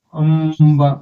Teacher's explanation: ఇప్పుడు ప వర్గం తీసుకుంటే మ శబ్దం మ సగం వస్తుందన్నమాట